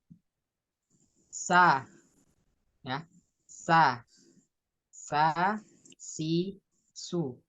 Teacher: lidahnya nempel ke gigi seri bawah